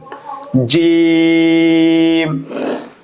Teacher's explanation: ছয় নাম্বার মাখরাজ। জিহ্বার মধ্যখান উপরের তালুর সঙ্গে লাগিয়ে উচ্চারিত হয়। জিম উচ্চারণ করার সময় মুখ হালকা ফাঁকা রাখবেন।